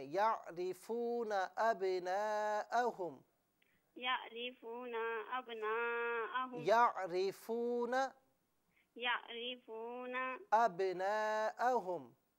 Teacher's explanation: کما یعرفون نہیں، نون کو نہ کھینچیں